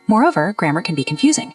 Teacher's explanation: Focus on the intonation, how the voice goes up at the connector and down at the comma